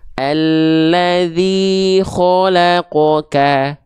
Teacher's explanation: Mulut kita cukup dibuka saja. Yang membuat vokal O itu terjadi karena pangkal lidah kita diangkat. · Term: isti'la